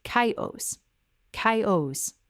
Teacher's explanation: The CH at the beginning of chaos makes a K sound, not a CH sound, not a SH sound. This happens because the word comes from ancient Greek, and in Greek, the CH is a hard K sound.